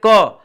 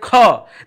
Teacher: ख में ज्यादा हवा है के में कम ए रहा है ठीक है तो याद रखिएगा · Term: महाप्राण